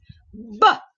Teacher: anak anda kena tahu bahawa bah ini ialah plosif bilabial